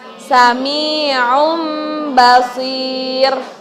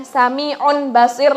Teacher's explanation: Apabila ada tanwin ini bertemu dengan ba. Berarti hukum bacaannya disebut iqlab. Cara bacanya sami'um basir.